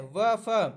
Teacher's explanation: जैसे व जब बोलेंगे तो दांत और ओठ दोनों का प्रयोग करेंगे, तो ये दंतोष्ठ व्यंजन हो गया।